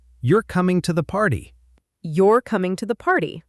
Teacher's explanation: That's a statement, so my voice falls at the end.